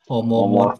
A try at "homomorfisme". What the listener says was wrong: Homomorfisme, ngomongnya lengkap ya, jangan biasanya homo pak, homo, jangan gitu ya.